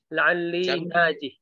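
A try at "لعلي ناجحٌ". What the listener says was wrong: Bacanya jangan diwakofkan. Najihun ditanwin. Gak ada alif lamnya ditanwin.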